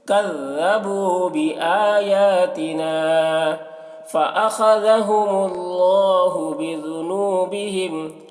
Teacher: خا کو پر پڑھیں گے، خا حروف مستعلیہ میں سے ہے، ذال کو باریک پڑھیں گے اور اللہ کلام کو پر پڑھیں گے کیونکہ اللہ کلام سے پہلے پیش ہے.